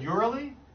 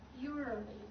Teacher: You're not even pronouncing the S.